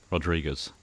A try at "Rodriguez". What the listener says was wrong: Rodriguez. You're saying like Guz. Yeah, Rodriguez. I feel like they're both acceptable, but it just sounded weird.